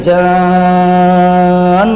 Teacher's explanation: مد لازم کریں گے، یعنی لازمی مد کریں گے، لازمی اسے کھینچ کر ادا کریں گے